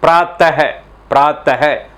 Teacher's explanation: विसर्ग जो है उसका उच्चारण भी ह की तरह ही होता है